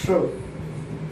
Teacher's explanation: ये जो श है ये तालव्य सा है, इसे तालव्य कहेंगे या तालु कह सकते हैं